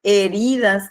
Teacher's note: heridas, que se carga en la I